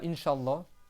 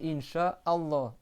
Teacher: Il y a pas de liaison entre le mot cha et le mot Allah.